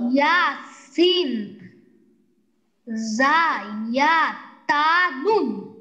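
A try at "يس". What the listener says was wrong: মাশাআল্লাহ।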